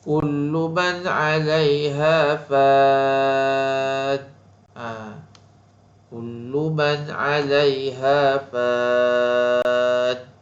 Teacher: Nun mati bertemu dengan ain, hukumnya izhar khalqi. Fan arid li sukun, jadi dibaca dengan panjang.